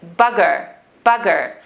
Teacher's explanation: accent they have the rhotic r they pronounce the letter r the scottish accent always pronounces the letter r